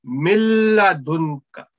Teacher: But as soon as we are going to join together, so this noon will milla, no noon sound. We directly join mim with lam mushaddad